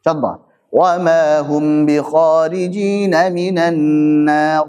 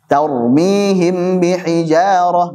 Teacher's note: yang baca dengan izhar maksudnya gunanya tidak dipanjangkan insah wa Hum bhorijina minanar enggak dipanjangin tarmiihim biijarah enggak dipanjangin